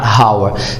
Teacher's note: you should keep in mind that the letter h is silent in the word hour